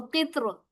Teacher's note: अलकित्र की रा पर जेर है, इसको बारीक पढ़ना बेहतर होगा